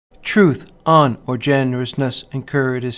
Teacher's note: the first metric foot in the last line is a spondee